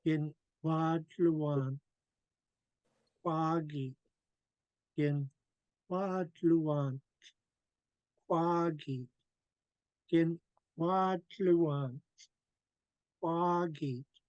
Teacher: The most emphasis is on qua, qua, in Wad Luan Kwagi.